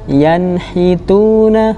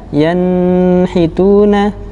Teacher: dalam pengucapannya tanpa disertai dengan ghunnah ataupun dengung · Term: izhar